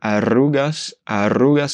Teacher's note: c'est un R double, donc R double, R, il est plus appuyé